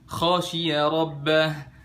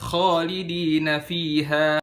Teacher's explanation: Pengucapan huruf kho yang bener itu dia enggak membulatkan bibir. Fathah biasa, buka aja biasa mulutnya.